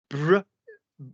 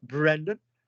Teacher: You've got the plosive of the b and then the roll of the r.